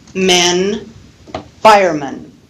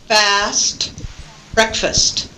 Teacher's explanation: we have the stressed vowel e, and then when we look at the compound word fireman, we have the unstressed vowel schwa